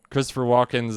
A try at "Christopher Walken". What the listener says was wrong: it's not a plural.